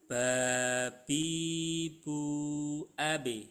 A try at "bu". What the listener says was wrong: Nah, hati-hati bunya tadi sedikit ada udara. Bu, bu. Jadi posisikan dirapatkan dulu. Nah, gini. Ditekan, baru diucapkan.